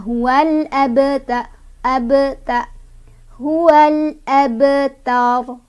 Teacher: Nih, ba-nya sudah sukun. Cara bacanya memantul tapi pantulannya kecil aja, nggak usah ditahan ya. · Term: qalqalah sugro